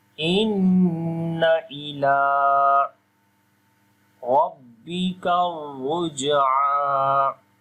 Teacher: Inna, we make a gunna sound here due to shad sign is coming on the noon.